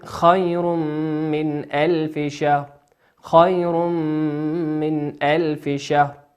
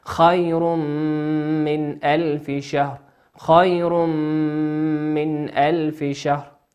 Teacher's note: تنوين أتى بعده حرف الميم، والميم من حروف الإدغام بغنة يغن بمقدار حركتين